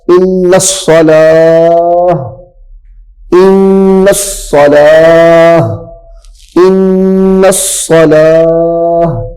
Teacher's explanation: تا کو ظاہر نہیں کرنا۔ اب یہاں سے تا ختم ہو جائے گی، اب پیچھے ہا رہ جائے گی، یہاں پہ ہا رہ جائے گی۔